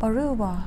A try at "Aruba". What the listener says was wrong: 아루바가 아니고 Aruba. A에 액센트가 있을 때는 에 발음이 나지만 그것이 A라는 필링의 액센트가 없을 때는 아나 에 발음보다는 어라는 발음으로 나올 때가 대부분입니다. 그래서 여기서도 역시 아루바가 아니고 Aruba. 들어서 아시겠지만 루바라는 단어의 액센트는 Aru, R-U 거기에 있기 때문에 Aruba 이렇게 표현한 거예요.